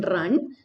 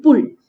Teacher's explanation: in Northern English, there is no difference between the vowel a as in run and the vowel u as in pull. ഇത് രണ്ടും ഒരേ രീതിയിലാണ് pronounce ചെയ്യുന്നത്.